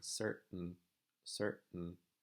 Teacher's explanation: I'm actually not making any kind of consonant sound between cert and n. I'm actually just making a glottal. I'm saying certain, certain.